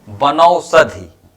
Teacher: शब्द है बनौषधि, तो बनौषध में वन है, वन में आ आया है और औषधि में ओ आया है। आ और ओ दोनों मिलकर के यहां वृद्धि हो जा रहा है औ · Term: वृद्धि संधि